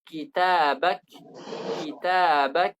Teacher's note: Ketika kita lafalkan kata kitabak, kitabak suara tertahan sementara nafas mengalir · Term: syadidun mahmus